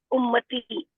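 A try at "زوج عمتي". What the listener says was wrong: ये उम्मती तो हमारे, हमारी कोई उम्मत भी नहीं है ना, अम्मती है।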